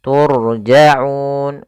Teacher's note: pelafalannya turjaun di sini ada Ro yang didahului dengan damah dan ro sukun itu kita baca dengan ro tafkhim ro yang dibaca dengan tebal